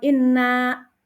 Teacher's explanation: Inna ya dibaca gunah karena ee di situ ada Nun bertasjid